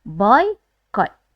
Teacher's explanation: dua vokal ni kita sebut sekali dalam satu suku kata. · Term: diftong oi